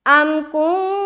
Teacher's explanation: تو یہاں پر ہم کریں گے اخفا، ام کن، جب اخفا کریں گے نا تو ہماری زبان ہوا میں ہوگی، کہیں بھی ٹچ نہیں کرے گی، منہ کے کسی حصے میں ٹچ نہیں ہوگا اور ایسا لگے گا کہ آپ ناک سے پڑھ رہی ہیں